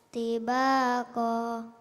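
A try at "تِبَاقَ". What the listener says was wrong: Ko-nya pendek di ujung nak. Tibaqo.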